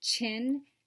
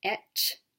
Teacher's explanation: the affricate voiceless ch sound, as in the beginning sound of chin and the end of etch